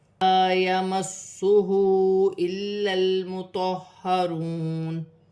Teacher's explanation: ہا پر الٹی پیش ہے اور چھوٹی مد ہے، مد منفصل، اسے 3 الف کی مقدار تک کھینچ کر پڑھا جائے گا۔